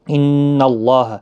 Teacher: نون مشدد پر غنہ ہوگا، اللہ کا لام اس زبر کی وجہ سے پر پڑھا جائے گا، اس کے اوپر کھڑی زبر بھی ہے، 1 الف کی مقدار کے برابر کھینچ کر بھی پڑھیں گے۔